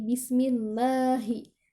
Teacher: Di lafaz Allah itu ujungnya adalah huruf H yang bersifat tebal.